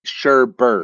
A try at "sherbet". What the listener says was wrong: No. Sherbet. No R, not sherbert.